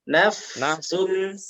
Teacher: Bukan nafa, tapi naf ditahan dan dialirkan.